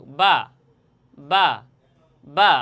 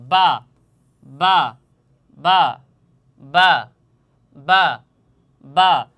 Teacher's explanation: বা শব্দটির বা হরফটির মাখরাজ তথা মাকাম হচ্ছে দুই ঠোঁট। দুই ঠোঁট হতে এই বা হরফটি উচ্চারণ হয়, তথা এই ঠোঁটের ভিজা অংশ